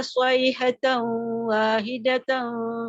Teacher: pada idgham sayhatan, nampak dia punya berdengung, ya, bersama dengan waw tu, makhraj waw, dan bawa suara tu ke khayshum